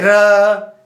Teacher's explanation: प्रकंपित, जीवा 2-3 बार कंपन करती है